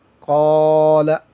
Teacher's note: قاف الف زبر قا، لام زبر لا، قال، یہاں پر الف پر پڑھیں گے کیونکہ الف سے پہلے جو حرف ہے یہ پر ہے۔ صاد زیر سی، را الف زبر را، صرا، طا زبر طا، صراط، یہاں پر بھی الف پر پڑھیں گے، الف سے پہلے جو حرف ہے وہ پر ہے۔